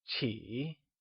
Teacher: Qi is pronounced using the falling, rising tone.